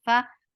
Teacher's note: For fatha, open your jaws, attach it. Fa, fa will get sifa of hums, and hums is a flow of breaths